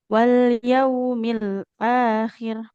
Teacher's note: Wal yaumil akhir, bukan wal yaumil akhir. Jadi yang panjang hamzahnya bukan kho-nya.